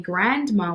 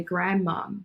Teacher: We completely get rid of that N and that D sound. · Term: Elision